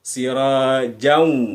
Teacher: ketika siraja, walaupun ada alif, tidak dibaca panjang. Langsung saja sirajau gitu ya.